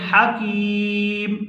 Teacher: یہاں ہم میم کے نیچے زیر نہیں پڑھیں گے بلکہ اس کو کر دیں گے ساکن